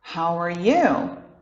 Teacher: você já deve ter ouvido ele agora cuidado com Sr tá a gente chama de R retroflexo Cuidado para não fazer um R como R do português